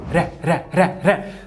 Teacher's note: Nome técnico: TEP alveolar vozeado